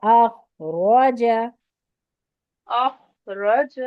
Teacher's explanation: را بھی موٹی، خواہ بھی موٹا